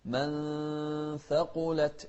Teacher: والثاء من أحرف الإخفاء، والنون ساكنة أتى بعدها الثاء، فنوضح المقدار ونوضح الإخفاء